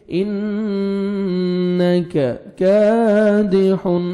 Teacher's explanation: یا ایوہا الانسان انک، نون مشدد ہے، غنہ کریں گے، کاف کو باریک پڑھیں گے